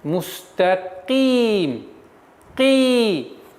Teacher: Каф твердый звук, но при появлении кесры она переходит на мягкость произношения.